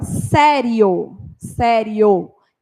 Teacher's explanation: fala que nós temos um ditongo crescente que que significa que o som começa fraco e ele aumenta no final